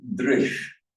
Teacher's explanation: In Sanskrit, whenever you get a sh, this is the palatal sh, it comes out the same place as the j comes out. Sanskrit differentiates between sh and sh, as some Slavonic languages do.